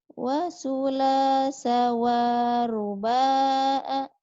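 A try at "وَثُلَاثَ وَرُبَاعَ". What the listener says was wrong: Wa-nya pendek. Wa sulasa wa ruba'a. Wa-nya pendek.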